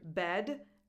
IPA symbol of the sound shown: ɛ